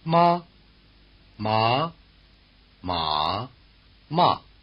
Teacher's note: en función de con qué contorno melódico pronuncies ma, esto puede significar caballo, regañina, mamá o cáñamo